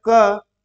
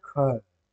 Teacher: लेकिन जैसे ही आप कह रहे हैं ख, देखिए मुंह से, आपके मुंह से सांस अधिक निकली